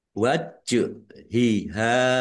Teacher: Jim sukun bacaan qalqalah ditampakkan pantulannya ya. Waj hiha ha fathah alif mad thobi'i.